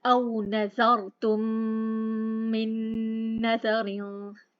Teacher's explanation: ये देखिए इस वक्त उस्मानी मुसहफ है, उसके ऊपर कोई अलामत नहीं है, नून साकिन है, अगला हर्फ मुशद्दद है, हमने मीम साकिन को मीम मुशद्दद के साथ मर्ज कर दिया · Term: इदगाम शफवी